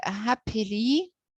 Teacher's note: whereas the word happily consists of the three syllables hap and it's a strong syllable because the stress is the first syllable of the adverb · Then I, it's unstressed, and finally the ly, which is unstressed. So these 3 syllables are stressed, unstressed, unstressed, and this is called dactylic.